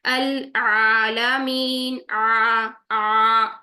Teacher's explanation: आ ये हम कर रहे हैं टू काउंट्स यहाँ पर लंबा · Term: अलिफ मद्दा